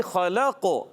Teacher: حرکت ہے، نہیں کھینچنا، لام کو قاف سے ملانا ہے، خلق، قاف حروف قلقلہ میں سے ساکن ہے، آواز لوٹ کر آئے گی